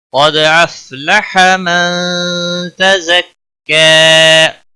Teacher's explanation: قاف حروف مستعلیہ میں سے پر پڑھیں گے، دال ساکن پر قلقلہ ہوگا. افلح، فا کو ہلانا نہیں، باقی کسی بھی حرکت والے حرف کو کھینچنا نہیں.